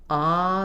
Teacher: When we say ah, the tongue is low, the jaw is open, and there's space for the vowel sound to resonate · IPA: /ɑ/